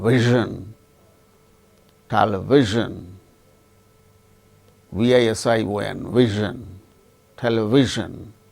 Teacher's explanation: Zh, this is voiced. This zh sound we don't have in Indian languages, but we have it in English